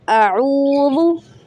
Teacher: अऊज़ु, वाव साकिन से पहले या पेश के बाद वाव साकिन आ जाए, दिस इज़ कॉल्ड वाव मद्दा एंड stretch to 3 seconds